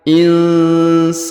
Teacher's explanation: huruf nun sukun bertemu ya maka kaidahnya didengungkan dan disamarkan